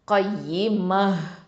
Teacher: இப்போ இங்கே தாமர் பூத்தால தம்மத்தைன் இருக்குது. இப்போ இதை வக்ஃபு பண்ணுறதுனால என்ன பண்ணுவோம், ஹ சுக்குனா மாற்றிடுவோம்